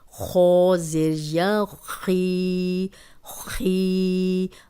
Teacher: خو موٹا ہے تو موٹا ہی ہوگا، لیکن جو حروف موٹے ہیں وہ زبر اور پیش کے ساتھ تو موٹے زیادہ ہوتے ہیں، لیکن زیر کے ساتھ وہ اتنی ان کی موٹائی نہیں رہتی